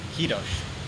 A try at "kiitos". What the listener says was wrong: Yeah, it's K-I-I-T-O-S. Like I told you before, when pronouncing my name, we don't use aspiration in TMK. So it's kiitos. Yeah, and it's like a sharp S.